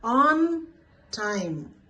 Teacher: ఆన్ టైం ఇక్కడ single word అయిపోయి stress కూడా టైం మీదకి, టైం అనే దానికి వెళ్ళిపోతుంది స్ట్రెస్